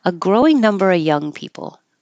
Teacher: when the of is before a consonant you don't have to make a v you can just drop it and say uh